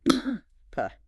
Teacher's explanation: Phonetically, P is what linguists call a voiceless bilabial plosive. · Simply put, you press your lips together, build up air behind them, and then release it suddenly.